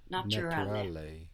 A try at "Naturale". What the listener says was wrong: Good, but the ch sound is from English. No, actually we have a T here.